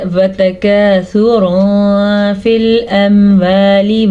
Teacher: میں نے یہاں پہ تنوین کی آواز کو چھپایا بھی اور غنہ بھی کیا